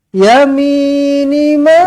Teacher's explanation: dibaca dengan panjang empat ataupun lima harakat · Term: Mad Jaiz munfasil